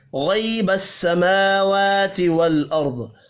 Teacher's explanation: غین، را اور ضاد پر پڑھے جائیں گے، میم اور واو کھڑی زبر کی وجہ سے ایک ایک الف کے برابر کھینچ کر پڑھے جائیں گے.